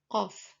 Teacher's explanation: Bunyi dorso-uvular adalah bunyi konsonan yang dihasilkan melalui pertemuan antara pangkal lidah dengan anak tekak, sehingga udara terhambat secara sempurna. Ketika hambatan udara dilepas, maka terjadi letupan.